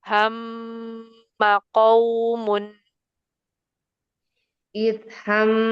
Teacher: Mimnya enggak enggak ada madnya, tapi ghunanya dia panjang karena ada tasdid.